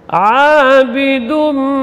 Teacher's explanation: Tapi karena ketemu dengan huruf mim, itu huruf idgham, maka tanwinnya idgham makna idkhal, dimasukkan ke dalam huruf idgham, itu huruf mim bersamaan dengan dengung karena gunnah bersama dengan gunnah. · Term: idgham bi gunnah